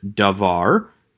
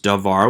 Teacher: So, for instance, we have the word davar, which becomes davar with a shva and a patak. The initial komets of davar has reduced to a shva because now the komets is too far away from the tone syllable. The second komets has reduced to a patak because that is no longer the accent syllable, and now we have a closed syllable that is unaccented, preferring a short vowel.